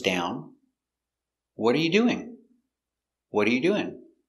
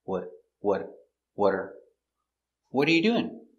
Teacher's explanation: the t is between two vowels it changes to a d sound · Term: a fast d sound